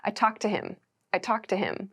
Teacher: however in everyday native speech we make these sounds come together I talked to him becomes I talk to him I talk to him so this talked is not clearly pronounced